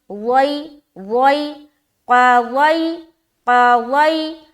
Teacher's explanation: یا لین کی آواز نرمی کے ساتھ نکلتی ہے اور جلدی ادا کرتے ہیں، اور اس کی آواز معروف بھی ہونی چاہیے۔